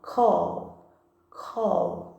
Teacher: Percebe que o L, quando a gente pronuncia o L, a gente sente as nossas cordas vocais vibrando